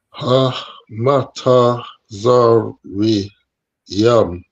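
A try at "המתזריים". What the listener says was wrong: Very good, right? So you pronounce this as ha, which is perfect,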